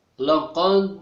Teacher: itu qalqalah sughra, jadi dipantulkan cara membacanya. Laqad, qalqalah sughra artinya kecil.